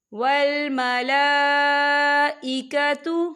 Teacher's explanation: لام کے اوپر کھڑی حرکات بھی ہے اور اس پر مد بھی ہے، تو ہم اسے 4 حرکت کے برابر کھینچ کے پڑھیں گے